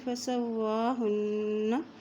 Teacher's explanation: یہاں نون کے اوپر شد ہے تو غنہ کرتے ہوئے پڑھیں گے